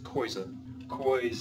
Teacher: remember in the pronunciation there is the oi which is non-nasal